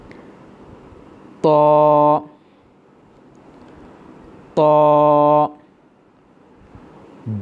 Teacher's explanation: জিহ্বার আগা সামনের উপরের দুই দাঁতের গোড়ার সঙ্গে লাগাইয়া ত, উচ্চারণের সময় একটু মোটা হবে। ত, তবে মুখ কিন্তু গোল হবে না, মুখ স্বাভাবিক থাকবে।